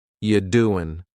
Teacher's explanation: The word you is reduced to ya. You doing, listen to that G at the end. You doing, it's gone.